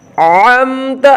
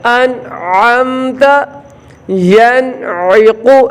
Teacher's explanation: نون ادا کریں، اس کے فوراً بعد والا حرف ادا کریں، یہاں اظہار کریں، سکتہ نہ کریں۔